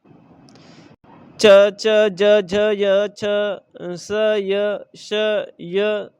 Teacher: च ज झ य छ स य श य जैसे व्यंजनों का उच्चारण ताल से होता है। इन व्यंजनों के उच्चारण के लिए जीभ के पिछले भाग को तालु से संघर्ष करना पड़ता है। संस्कृत भाषा में इनका उच्चारण तालव्य ही होता है।